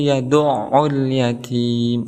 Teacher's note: Di sini ada ain kemudian ditasdidkan, maka ada hentakan kepada huruf ain, makhraj huruf ain.